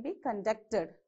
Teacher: it is a verb so your examination will be conducted okay so you have to stress on the second syllable